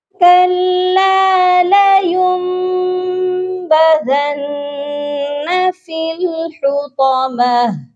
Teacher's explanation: اور یہ میم کیوں ہے اس کے بارے میں جانتے ہیں کہ یہ میم تب آتی ہے جب نون ساکن کے بعد یا تنوین کے بعد با آ جائے تو ہم اس کی جگہ میم کو دے دیتے ہیں. نون ساکن کی جگہ ہم نے میم کو دے دی اور یہ یہاں پر اقلاب کا قاعدہ بنتا ہے. یہاں پر ہم نے لَيُن نون کے ساتھ نہیں یا کو ملا کر پڑھنا بلکہ ہم نے میم کے ساتھ یا کو ملانا ہے.